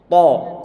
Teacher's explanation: Pangkal lidah bagian terakhir lidah yang terangkat ke atas. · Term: isti'la